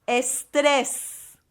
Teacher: there's emphasis on the second E